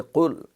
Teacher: تو اب اس کا پڑھنے میں پہلے قل، یہ قاف جو ہے یہ کاف وہ کل بل والا نہ ہو، کاف کاکے والا نہ ہو، بلکہ قل، قل یہ حلق سے سختی کے ساتھ یہ ادا ہوتا ہے، حروف قلقلہ میں ہے